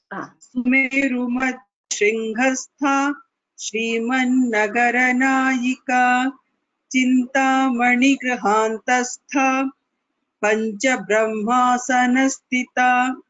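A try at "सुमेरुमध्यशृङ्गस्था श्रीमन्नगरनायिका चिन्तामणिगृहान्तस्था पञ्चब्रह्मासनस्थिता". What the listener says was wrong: उत्तमम just the महाप्राण little मोर stress is required would यू like to try again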